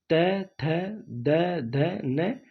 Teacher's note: दंत से त वर्ग पूरा निकलेगा